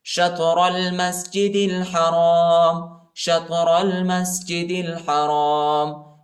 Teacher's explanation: ملائیں گے، الف نہیں پڑھا جاتا، الف پر حرکت نہیں، اور دال کو لام کے ساتھ ملائیں گے، الف نہیں پڑھا جاتا ، شطر المسجد الحرام، شطر المسجد الحرام، شطر المسجد الحرام، وَإِنَّهُ